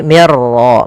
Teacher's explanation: Langkah pertama suara nunnya dimasukkan ke ro dan diganti menjadi r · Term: idgham bila ghunah